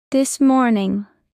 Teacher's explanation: In this morning the s and m link together.